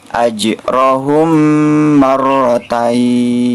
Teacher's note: ketika terjadi hal tersebut terjadi mint sukun bertemu dengan huruf mim maka cara membacanya harus dipanjangkan dua harokat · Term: idgham syafawi